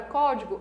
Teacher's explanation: a antepenúltima sílaba é a mais forte. Na palavra código, a mesma coisa, a antepenúltima sílaba é a mais forte.